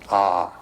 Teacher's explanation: It's written A-U-M. You start in the back of the mouth, ah, and then oo, you fill the mouth, and closes at the mouth. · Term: Om